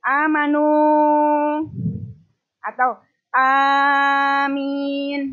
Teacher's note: A-nya itu yang panjang, bukan min-nya yang panjang tapi A-nya yang panjang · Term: mad jaiz